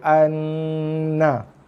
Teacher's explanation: Kemudian jaga dengung pada nun sabdu. Tekan, mesti tekan baru dengung. Lepaskan dengan baris dia.